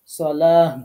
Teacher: জবর দেয়া আছে করার সময় এটাকে হা সাকিন বানাইতে হবে অর্থাৎ গোলটা হা হয়ে যাবে এবং সাকিন হবে সালা এরকম পড়তে